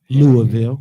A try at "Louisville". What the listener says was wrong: Louisville. Louisville, not Ville. Bull.